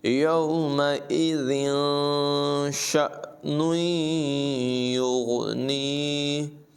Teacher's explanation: تنوین کے بعد شین حروف اخفا میں سے ہے، ناک میں چھپا کر اس کی آواز کو پڑھیں گے. یومئذ شأن یغنیہ، یہاں پر بھی نون میں جو ہے وہ ملا کر اور غنہ کر کے پڑھیں گے.